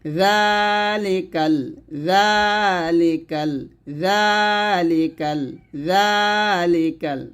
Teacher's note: জালের মাখরাজটা হলো জিহ্বার আগা উপরে দাঁতের আগার সঙ্গে লাগাবেন তাহলে উচ্চারণটা সঠিক হবে নিচে লাগালে কিন্তু উচ্চারণ ভুল হবে জাল